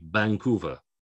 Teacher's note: especially a V at the beginning of a word sounds more like a B